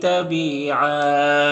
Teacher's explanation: دو زبر ہے تو ایک زبر کے ساتھ الف پڑھیں گے وقفی کی صورت میں